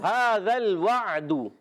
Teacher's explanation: عین کو حلق کے درمیان والے حصے سے ادا کریں گے تو عین کلیئر ہوگا۔ عین اور ہا ہمیشہ حلق کے درمیان والے حصے سے ادا ہوتا ہے۔